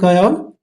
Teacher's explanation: अल्प प्राण का मतलब जिसको बोलने पर कम हवा निकलती हो गले से